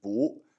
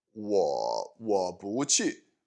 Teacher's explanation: the bu will change from fourth tone to second tone, and actually in all of my examples this is true here, but it is normally bu, fourth tone, but it changes to bu, second tone, when it comes oh, I didn't write it right there.